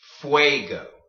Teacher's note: When you have a U and an E next to each other, they typically, if it's just a U and an E and it's not, there's no G in front of it, if it's just a U and an E, typically those two vowels combine to make the way sound